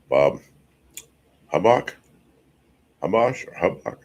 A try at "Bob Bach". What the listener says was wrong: HUB is silent. Bob Bach.